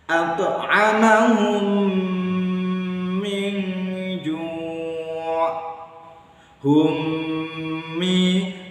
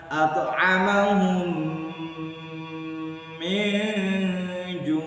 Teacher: Cara membacanya harus dengung 1 alif atau 2 harokat. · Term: idgham mimi